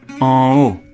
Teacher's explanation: Être en haut signifie être à un étage supérieur, mais être en eau signifie être en sueur. Le H de en haut reste aspiré pour éliminer la possibilité de confusion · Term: H aspiré